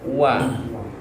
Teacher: antara bibir atas dan bibir bawah huruf wa